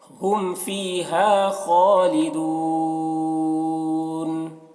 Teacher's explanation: خا کو پر پڑھیں گے کیونکہ خا حروف مستعلیہ میں سے ہے